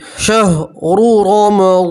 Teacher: शहरु रमज़ानल्लज़ी, रा के ऊपर पेश है, रा को मोटा पढ़ेंगे। यहाँ रा के ऊपर ज़बर है तो भी रा को मोटा पढ़ेंगे, पूर पढ़ेंगे। और वाद के साथ अलिफ मद्दा है इसलिए 1 अलिफ के बराबर खींच कर पढ़ेंगे।